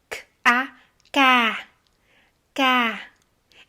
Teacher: n'oubliez pas que le k en vietnamien n'est pas explosif